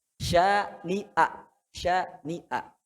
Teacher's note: Hamzah itu tempatnya tenggorokan bawah.